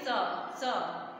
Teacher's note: जो छोटा सा होता है उसे आराम से बोलेंगे स, तो जब छोटा सा बोलेंगे तो जीभ हमारी दांतों से टच हो रही है